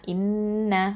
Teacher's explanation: இதில் ஹம்சா கெஸ்ரா நூன் ஷத்தா இன், நூன் ஃபதா ந, இன்ன அந்த நூனில் ஷத்தா இருக்கிறதுனால என்ன பண்ணுவோம்? நம்ம அக்மல் குன்னா, பூர்ணமாக குன்னா கொடுக்கணும்.